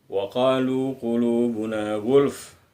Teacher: dua huruf terakhir sebelum berhenti lam barisnya sukun atau mati. Maka fa-nya huruf terakhir kita baca setengah.